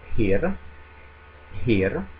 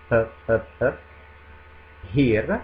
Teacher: Allora, attenzione, nella prima parolina pir, la p è una vera e propria consonante, una consonante aspirata, un'occlusiva aspirata